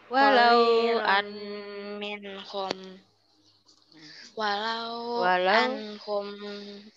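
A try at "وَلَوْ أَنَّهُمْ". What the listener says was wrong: Annahum ada naknya. Ulang-ulang. Walau annahum fa'alu ma yu'azuna.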